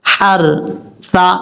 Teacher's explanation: را ساکن سے پہلے زبر ہو تو را پر پڑھا جاتا ہے، یعنی موٹا پڑھا جاتا ہے. آپ نے اس کو موٹا پڑھنا ہے، فل مول.